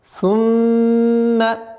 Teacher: В данном случае мим у нас в размере двух огласовок. Мы удерживаем назализацию.